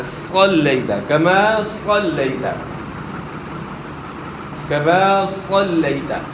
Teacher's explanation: صاد کو موٹا ادا کرنا ہے، صاد موٹے حروف میں سے، صلیت نہیں پڑھنا، صاد کو موٹا ادا کرنا ہے.